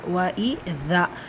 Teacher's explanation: وَإِذَا வாவ் ஃபத்ஹா அலிஃப் கஸ்ரா. وَإِذَا இந்த தா பக்கத்தில் அலிஃப் மத்தா இருக்குது, 2 ஹரக்கத்தில் நீட்டம் கொடுக்கணும்.